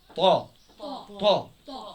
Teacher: هجيب الطاء اروح الم اللسان اجوفه واضرب في سقف الحنك طاء عالية الطام هكذا.